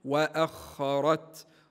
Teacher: نفس هكذا تقرا نفس ما قدمت واخرت ردوا بالنا تفخيم الخاء الخاء مفخمه وبعدها ايضا حرف الراء ايضا مفخم لانه متحرك بالفتح